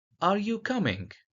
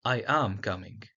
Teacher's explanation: Rising intonation for yes no question